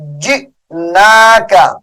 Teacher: جیم حمزہ زیر جی، جھٹکے کے ساتھ پڑھیں گے